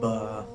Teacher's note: दोनों होंठों की अंदरूनी तरी के मिलने से बा अदा होता है।